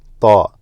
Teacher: Ta originates from the tip of the tongue, touches the upper portion of your mouth, right behind your teeth.